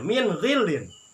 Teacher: Ghin itu ada tetap di makhraj di sini karena ini disebut huruf halak. Ini huruf yang keluar dari makhraj halak atau tenggorokan.